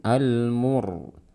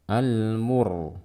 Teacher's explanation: Kemudian al-mur, ro sukun sebelumnya dhammah, dibaca dengan ro yang tebal